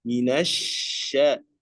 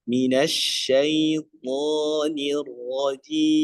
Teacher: Kemudian huruf shinnya, jangan lupa huruf shin itu memiliki sifat tafashi. Tafashi itu udaranya ya boros. Minasya ya, sambil buka fathah.